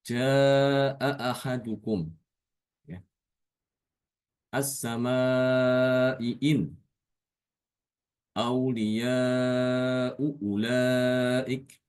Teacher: Aqsal halq. Aqsal halq tenggorokan bagian paling bawah ya. Sehingga sulit untuk diucapkan. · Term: hamzah